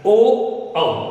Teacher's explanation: ये दो स्वर कंठ और ओष्ठ की सहायता से बोले जाते हैं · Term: कंठ ओष्ठ वर्ण